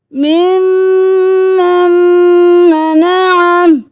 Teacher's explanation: یہاں پہ میم پہ تشدید ہے، یہاں پہ غنہ کریں گے